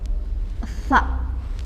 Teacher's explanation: Sifat huruf sa istifal, artinya lidahnya turun, kemudian infitah, mulut terbuka, sa. Kemudian ismat, hati-hati dalam membaca, juga hamas, ada mendesisnya, hamas.